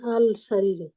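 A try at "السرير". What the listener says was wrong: ভেঙে ভেঙে বলতে হবে আল সারিরু, কিন্তু মিলাতে গেলে আল সারিরু বলতে পারবেন না, সারিরু হবে।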